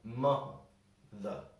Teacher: a word like mother we pronounce the o ma the but we don't really pronounce the e at the end we kind of skip over it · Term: schwa sound